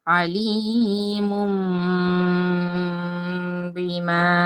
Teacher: তো নুন সাকিন বা তানবিনকে এই যে মিম দ্বারা পরিবর্তন করে ফেললাম। এখানে তানবিনের পরে রয়েছে বা অক্ষর, এখন এই তানবিনটা মিম দ্বারা পরিবর্তন হয়ে যাবে। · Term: ইকলাবের